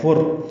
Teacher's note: فا کو را سے ملانا ہے، ادغام ہے، یہ ادغام کامل ہے، فر، نون کی آواز ختم ہو جائے گی